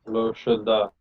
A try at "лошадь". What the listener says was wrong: Лошадь with a soft sign.